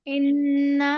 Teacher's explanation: نون مشدد ہے دو غنہ کریں گے ایک الف کی مقدار ناک میں آواز روک کر پڑھیں گے